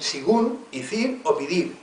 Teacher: La vocal E cambia en I